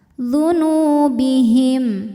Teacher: karena ada wau sukun didahului harakat damah maka Nun panjang dua harakat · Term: Mad Thobi'i